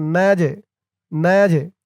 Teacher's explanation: এই জিমটা কলকলার হরফ ধাক্কা দিয়ে পড়তে হবে।